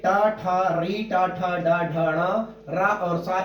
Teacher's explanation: यहाँ पर 3 नंबर पर मूर्धा है, और ये देखिए 3 नंबर पर जब हम अंदर से बाहर को आ रहे हैं, अंदर से बाहर को निकलेंगे तो देखिए टा ठा री टा ठा डा ढाणा रा और सा, इनका उच्चारण स्थान मूर्धा है। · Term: मूर्धन्य वर्ण